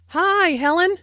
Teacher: Notice that the I sound in hi is extended to show that is very pleased to see Helen.